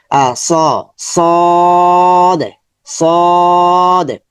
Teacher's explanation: জিহ্বার আগা সামনের নিচের দুই দাঁতের গোড়াতে স্পর্শ করবে।